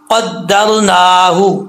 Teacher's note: والقمر را قدرناہ، قاف کے اوپر 2 نقطے ہیں اور یہ 2 نقطوں والا قاف ہے تو موٹا پڑھا جائے گا، یعنی پر پڑھا جائے گا۔ آگے را ساکن سے پہلے زبر ہے، را پر پڑھا جائے گا۔